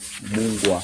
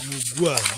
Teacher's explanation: produz uma fricativa velar, como G em get na língua inglesa, mas continua, pelo que a palavra tende a soar como Mungwa.